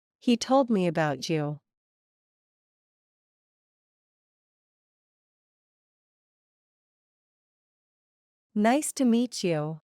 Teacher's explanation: ambas consonantes unen sus sonidos y forman el sonido que posee la che en inglés el cual es llamado africada postalveolar sorda